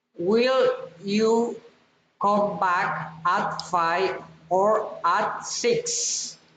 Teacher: alternative question rising and falling intonation